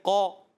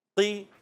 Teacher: دیکھیں آواز نیچے گری تو ہلکی سی آواز میں کمی آئی ہے نا، قو اور قو زیادہ موٹا تھا، قی کمزور محسوس ہوتا ہے ، اس لیے کہ وہ زیر ہے، پستی کی طرف